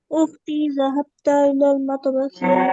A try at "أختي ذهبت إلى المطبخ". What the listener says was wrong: যাহাবতা না, যাহাবাত। যাহাবাত তাতে সাকিন। উখতি যাহাবাত ইলাল মাতবাখি। উখতি যাহাবাত ইলাল মাতবাখি। উখতি যাহাবাত ইলাল মাতবাখি।